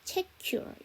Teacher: 안 그러면 넷미가 돼버리는데 넷미라는 발음은 없어요. 자, 그 다음에 책 다음에 유어니까 연음시켜서 check your 이렇게 되겠죠